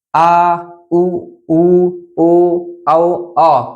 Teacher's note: जीभ के पश या पीछे वाले भाग से बोलने वाले स्वर